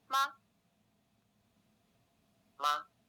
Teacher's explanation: The neutral tone is short without a full tone contour and is pronounced more softly than words with full tones.